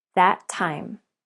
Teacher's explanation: How many times do you pronounce t? The answer? Just once. The two words share the t sound.